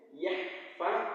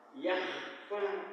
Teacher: Huruf K tidak bergetar itu tidak boleh. Hak harus jerni bersih, Kak harus bergetar